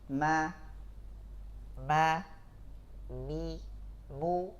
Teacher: Tidak bisa kita ucapkan ma itu tanpa ada juz'ul khayshum. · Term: huruf mim